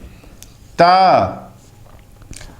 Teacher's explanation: अब देखिए त, त का उच्चारण स्थान दंत है और इसीलिए यह दंतीय है।